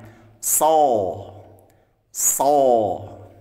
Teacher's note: Nah, beda dengan sod. Kalau sod maka kita angkat pangkal lidah. So. Nah, mulutnya terbuka, tidak boleh ditahan ya.